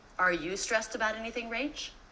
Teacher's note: Did you notice how the intonation went up at the end?